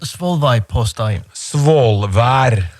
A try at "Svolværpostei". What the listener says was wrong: Svolværpostei. You have an R there, Svolvær. That's the name of the town.